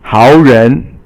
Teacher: 三 声, remember, is third tone, and it's rising, falling and rising, and 人 is second tone or just rising